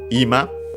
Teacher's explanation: means now, accent on the first syllable